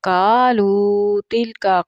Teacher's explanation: قاف جو ہے یہ زبان کی جڑ سے ادا ہوتا ہے اور موٹا ہوتا ہے